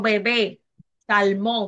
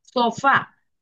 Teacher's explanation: está acentuada en la última sílaba · la mayor intensidad con la que pronunciamos es la última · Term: palabra aguda